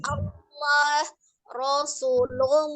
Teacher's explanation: sebelum Al jalalah itu fathah atau dhomah maka lamnya menjadi tebal